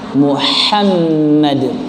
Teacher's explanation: Muhammad dengan ha yang keluar dari tengah tenggorokan